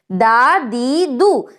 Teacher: آپ کی زبان جو ہے آپ کے دانتوں کی جڑ میں ٹچ کرے گی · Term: دال کا جو تھا مخرج